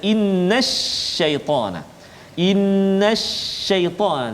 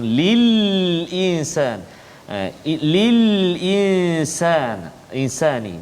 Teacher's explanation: Jadi lam itu dia tak bunyi, jadi idgham. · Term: lam syamsi